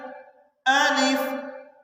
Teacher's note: اس کو ادا کیا جاتا ہے جوف دہن سے